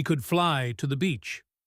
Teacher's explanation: The voice jumps up on fly, putting the spotlight on the new mode of transportation.